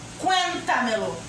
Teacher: é a 4ª sílaba tônica, contando de trás para frente da palavrinha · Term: sobresdrújula